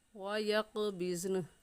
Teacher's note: قاف حروف قلقلہ میں سے ہے تو قلقلہ کریں گے